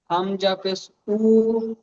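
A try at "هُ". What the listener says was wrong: টান হয়ে যাচ্ছে, টান হয়ে যাচ্ছে। হামজা পেশ উ। উ, উ বলে টান দিলে হবে না, উ। হামজা পেশ উ আর ইয়া পেশ ইউ।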